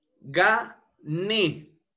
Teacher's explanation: La sílaba tónica está en ne · es una palabra aguda. El mayor impulso de voz se encuentra a nivel de la sílaba última